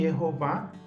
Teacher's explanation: Yeho, a primeira sílaba, com vogal longa, sendo uma sílaba pré-tônica, sílaba aberta, e a segunda sílaba, Vá, uma sílaba tônica com vogal longa